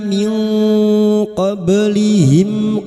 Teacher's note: nun sukun bertemu qaf ikfa hakiki, nun sukun dibaca samar dan mendengung selama 3 harakat. Min qablihim ba sukun yang mati asli di tengah kalimat qalqalah sugra.